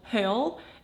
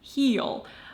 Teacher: there are two different e sounds lax and tense